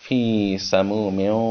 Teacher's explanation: میم کو واو کے ساتھ ملایا ہے، دونوں ہونٹوں کو خوب گول